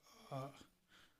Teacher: विवत उच्चारण करने पर मुख का सबसे ज्यादा खुलना